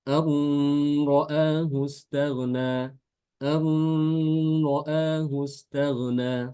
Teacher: nunnya itu diidghamkan ke ro, disertai dengan gunah